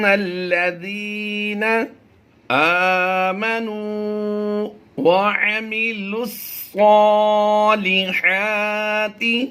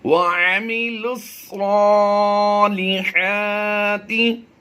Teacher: 4 حروف یہاں بالترتیب سائلنٹ ہوں گے، واو، الف، الف اور یہ لام، کیونکہ ان پر کوئی حرکت نہیں ہے. تو لام کو صاد سے ڈائریکٹ ملا کر پڑھیں گے